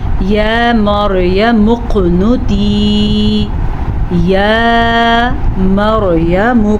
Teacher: را ساکن سے پہلے میم پہ زبر ہے تو پھر سے را ہم پر پڑھیں گے